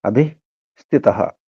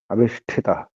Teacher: స అనేది దంత్యస మూర్ధనిషగా మారుతుంది త మహాప్రాణం థ అది మహాప్రాణం ఠ గా మారుతుంది